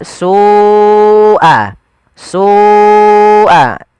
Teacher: Sual adzab ada lafal su ada mad wajib muttasil yaitu lafal su wajib kita panjangkan sepanjang empat atau lima harakat.